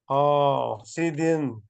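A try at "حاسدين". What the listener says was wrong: حاسدن. ہا نہیں، حاسدن. یہ وسط حلق سے آپ کو ادا کرنا ہے.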